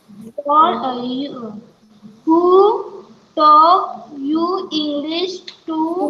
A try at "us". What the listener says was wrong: यू नहीं है बेटा, अस है. US अस. एस की साउंड मत खाना. US अस.